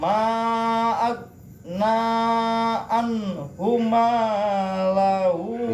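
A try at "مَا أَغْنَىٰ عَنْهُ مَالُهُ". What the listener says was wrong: Malu jangan diganti-ganti itu. Haroka diganti artinya beda. Maluhu bukan malahu, maluhu. Ma tuh 2 3.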